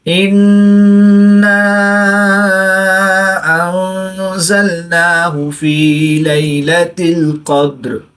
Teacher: دال ساکن ہے، یہ حروف قلقلہ میں سے، تو یہاں پر قلقلہ صغرا کر کے پڑھیں گے۔